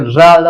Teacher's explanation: जीभ जाकर के ऊपर दांतों के ऊपरी वाले भाग के एकदम जड़ में जाकर के छूती है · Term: वर्त व्यंजन